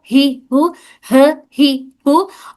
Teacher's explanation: जैसे अ इ उ ह इस तरह से ह और ये जो बड़ी ह और छोटी ह में यही फर्क है कि ये वाली ह हमारी हलक के निचले हिस्से से अदा हो रही है। ह और ये वाली ह हमारे हलक के दरमियानी हिस्से से।